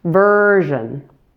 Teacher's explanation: Make sure the first syllable is 3 times longer than the ending since it has primary stress.